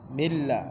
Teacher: এখানে কিন্তু মিন গুন্না হবে না সম্পূর্ণ পরিষ্কার করে পড়তে হবে